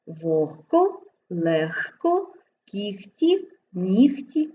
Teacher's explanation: виняток становить звук г який тільки у словах вогко легко легко кігті нігті дьогтю та в похідних словах буде вимовлятися як х